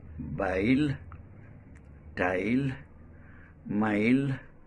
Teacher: This sound starts at A and glides to E